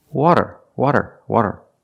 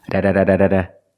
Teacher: It's not a rolled R. It's a flap T or a fast D.